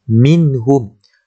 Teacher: Nun sakinah ataupun nun mati bertemu dengan huruf ha, yang mana ha itu adalah antara huruf izhar halqi. Maka cara bacaannya kita kena jelaskan, tidak perlu dengung.